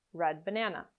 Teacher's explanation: Or you might pronounce a glottal consonant, where you put your tongue into position to make a D sound, but you never release it